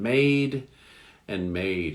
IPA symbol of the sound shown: ei